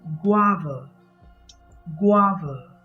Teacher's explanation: word is spelt g a v a g a v a it has two syllables the first syllable gua carries the main stress so you say guava guava you don't pronounce it as gova